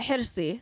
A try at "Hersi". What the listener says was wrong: Yeah, you kind of sound like it's serious. Just relax. Just chill out.